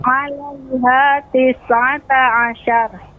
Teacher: pengucapan sya tidak syia, bukan syia, tapi sya. Dengan cara rahwa turunkan sya, diucapkan sya.